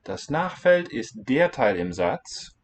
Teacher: Okay, there's a kind of subtle difference because this one is identifying what das Nachfeld ist. We're going to put a little weight on the word der.